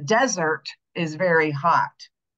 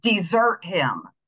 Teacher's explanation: the noun having the first syllable accented and the verb having the second syllable accented